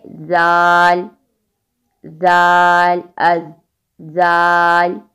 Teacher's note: next ہے زال, بہت نرمی سے ادا ہوگا اور تب ہی صحیح ادا ہوگا جب زبان کی نوک سامنے والے دانتوں کے کنارے پہ لگے گی